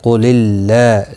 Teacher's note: اللہ کا لام زیر کی وجہ سے باریک پڑا جائے گا، اس کے اوپر کھڑی زبر ہے، ایک الف کی مقدار کے برابر کھینچ کر پڑھیں گے.